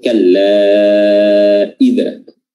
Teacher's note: Ya, di kalla, lafaz kalla di sana ada yang namanya mad. Ya, di sini panjangnya bisa 4 atau bisa 2, namanya mad jaiz munfasil. Ya, namun di sini kami memilih untuk membacanya dengan 4 harokat.